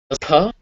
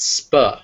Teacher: After an s, this does p, but sp. You should feel that big puff after p but not after sp. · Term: aspiration